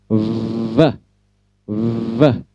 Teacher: Seperti itu ya, gigi atas depan bertemu bibir bagian bawah, lalu ucapkan V sampai menimbulkan getaran di bibir bawah. Gigi atas bertemu dengan bibir bawah dan muncul getaran pada bibir bawah.